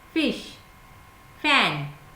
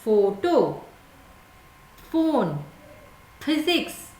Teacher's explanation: और जो F से जो फ बोलते हो, F का जो फोनिक साउंड फ है, वो उसमें आपका जो ऊपर वाला दांत है यानी अपर टीथ आपके लिप्स को टच करता है